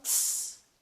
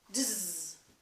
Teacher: And it's an affricative because it involves an interruption of the breath. Now, let's make that same sound, the tss sound, but we're going to add voice to it so that tss becomes a voiced alveolar affricative